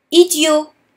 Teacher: the T at the end of idiot is silent because we're speaking about a boy.